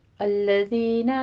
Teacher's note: الذین میں ذال کو نرمی سے پڑھتے ہوئے یا مدہ ادا کریں گے